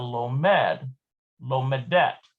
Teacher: the stress falls on the mem so we've got lomed lomadet it is shifted to the last